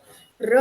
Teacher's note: क कहते हैं, र कहते हैं, तो र जब कहते हैं आप, तो र कहते समय देखिए आपकी जीभ जो है कंपन करने लगती है। थोड़ी-सी दाँत के साथ टकराती है, आपका जो मूर्धा का हिस्सा है, मूर्धा का हिस्सा मतलब जो दाँत के पास जो है खुरदरा हिस्सा होता है, उस खुरदरे हिस्से को जीभा जो है एक तरह से वाइब्रेट हो जाती है।